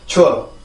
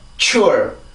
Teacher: 폐쇄음의 특징인 공기가 강하게 막혔다가 마찰음의 특징인 아주 센 공기가 나오는 그 특징을 두 가지 다 갖고 있어요. 그래서 앞에 라고 하는 소리가 강하게 나오고요.